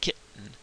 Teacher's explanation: That's when you stop the sound in the back of your throat, like as in the word kitten, right? There's a stop there, almost like a hiccup. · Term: glottal stop